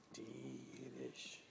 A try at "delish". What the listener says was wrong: If you say delicious, like delash. It sounds like delash.